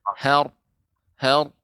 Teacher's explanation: ra-nya dinaikkan. Caranya lidahnya naik ke atas bagian ujungnya dan bagian belakang. Jadi seperti melengkung. Har, har, tebal. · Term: ra-nya tebal